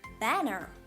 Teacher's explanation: so the first syllable ban is strongly pronounced than the other so that is the stressed syllable